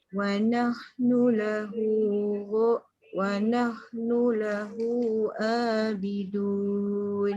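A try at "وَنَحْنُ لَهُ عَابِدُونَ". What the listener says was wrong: Masuk sikit lagi ain tu. Wa nahnu lahu abidun.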